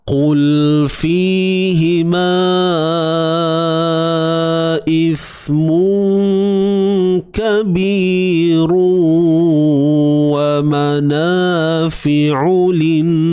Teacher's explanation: Huruf ain ni jangan lupa sempitkan tengah kerongkong kita.